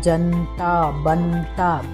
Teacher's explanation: जनता और बनता में भी जो न का उच्चारण है वह आधे की तरह ना करके पूरे की तरह ही करना चाहिए